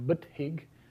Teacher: So you've gotten rid of the first vowel and the third vowel in the word.